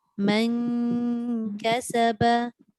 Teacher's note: Bunyinya nipis, tapi pastikan nipis itu mesti bertemu hampir dengan huruf kaf. Hampir dengan makhraj huruf kaf.